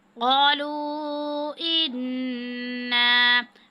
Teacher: نون مشدد پہ غنہ کریں گے